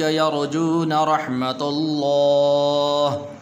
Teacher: یہاں پر لفظ اللہ کو پر کر کے پڑھیں گے۔